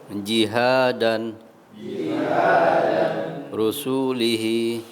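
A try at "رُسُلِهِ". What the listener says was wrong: Pendek semua. Rusulihi, hi-nya panjang. Rusulihi.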